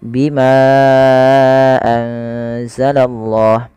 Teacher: Ya, di sini adanya ma yang bertemu dengan hamzah setelahnya dan hamzah tersebut pada lain kata, maka kita namakan dengan mad jaiz munfasil. Untuk mad jaiz munfasil sendiri panjangnya adalah 4 harakat atau 5 harakat.